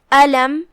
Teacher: حمزت قطع ہے لہذا ہم حمزہ کو ظاہر کرتے ہوئے یہ کلمہ کو ادا کریں گے. علم آخری میں میم ہے اور اس پہ جزم ہے. · علم آخری میں میم ہے اور اس پہ جزم ہے. یہاں میم کا حکم ہے اظہار شفوی لہذا ہم میم کو ظاہر کریں گے اور بغیر غنہ کے یہ حکم کو ادا کریں گے.